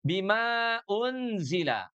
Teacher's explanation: Tapi ketika kita wasol bertemu dengan hamzah pada kata unzila, unzila diawali dengan huruf hamzah, maka mad yang asalnya 2 harokat, sekarang harus dipanjangkan menjadi 4 harokat.